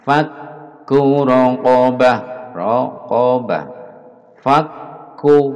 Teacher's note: Kaf di tasdid, di double, ditahan agar nampak tasdidnya.